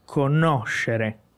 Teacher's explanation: Então, é o no que é a sílaba tônica.